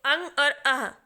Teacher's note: अगर आप इसको उच्चारण करें तो आपको सीधा समझ में आएगा कि यहां पे कंठ से हम इसका उच्चारण स्थान देखते हैं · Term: विसर्ग